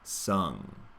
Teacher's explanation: We have a nice open quality to the vowel and then close off for the NG.